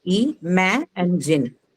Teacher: So ma is the one that will take the stress, the second syllable.